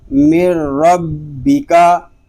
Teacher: اب یہاں ہم نون ساکن کو نہیں پڑھ رہے بلکہ میم کو را کے ساتھ ملا رہے ہیں، یعنی نون ساکن جو ہے وہ را کے اندر مکمل طور پر مدغم ہو چکا ہے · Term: ادغام تام